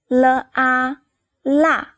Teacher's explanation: L is a little different from the other three. Your tongue touches the gums gently, and the airflow comes out from the two sides of your tongue.